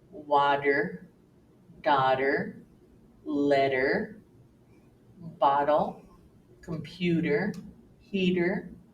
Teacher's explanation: Americans have the habit of pronouncing T in the middle of the word as if it were a d